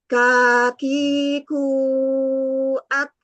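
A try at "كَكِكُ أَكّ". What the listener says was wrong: Hamsnya hilang.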